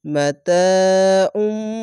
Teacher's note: আইন দোপেশ না বলে এই মিমকে ধরে উচ্চারণ করে গুনগুন করে আওয়াজ হবে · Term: ইকলাব গুন্না